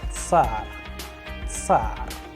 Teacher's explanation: you have to make a combination of two different sounds, T and S